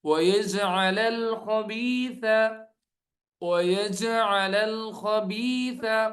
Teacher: جیم حروف قلقلہ میں سے ہے، یج ڈبل آواز آئے گی